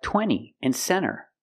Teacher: when you have n t between vowels you don't really hear the T